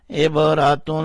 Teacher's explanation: عبارہ، تا دو پیش تن، عبراتن، تا کے اوپر جو دو پیشے ہیں اس میں جو نون کی آواز آ رہی ہے اس کو ہم نے تھوڑا سا چھپا لیا یعنی اخفا کیا